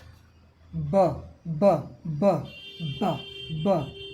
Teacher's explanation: इसमें झटका कोई हवा का नहीं है